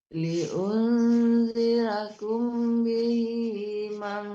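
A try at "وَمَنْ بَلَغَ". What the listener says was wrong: Nggak ada panjang di situ. Cuman dengung aja di situ ada.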